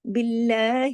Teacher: اب دیکھیے اللہ کے نام سے پہلے زیر ہے، اب اس میں لام موٹا نہیں ہوگا، لام جلالہ نہیں ہوگا، باللہ، فقد، فقد، फा बारीक, कॉफ मोटा, क्योंकि कॉफ मोटे हरूफ में से है और दाल जो है इस जज़म के साथ है, तो इस पे हमने कलकला किया।